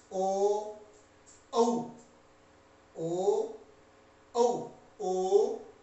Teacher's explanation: कंठ और ओठ दोनों के सहयोग से जो उच्चारण होता है वो कंठ्योष्ठ कहलाते हैं। ओ, औ, ओ, औ, ओ, यहाँ ओ उच्चारण करते हैं तो तालु में तो हवा जाती है, लेकिन ओ ओठ भी उसके ओठ के रूप में विकार आता है, ये कंठ्योष्ठ कहलाते हैं।